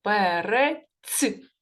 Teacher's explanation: приголосний твердий і останнє слово перець п приголосний твердий перець а в кінці Ми чуємо приголосний але м'який